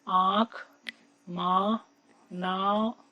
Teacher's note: हवा मुंह से ज्यादा निकल रही है और नाक से कम, और ये सबसे प्रधान लक्षण है अनुनासिक के उच्चारण का